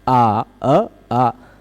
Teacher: और अ आ दोनों बोल लेते हैं, बोलने में उच्चारण स्थान नहीं बदलता पर प्रयत्न बदल जाता है, प्रयत्न बदल जाता है ना। अ संवृत है, आ विवृत हो गया